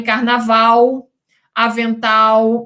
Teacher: normalmente esse L sofre a vocalização. Somente no polo rural urbano, do contínuo de urbanização, dá-se a supressão do L.